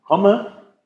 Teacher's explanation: Das sind aber keine zwei M, da ist nur ein M zu hören. Das in der Orthographie, die zwei M zeigen nur an, dass es ein kurzes O ist.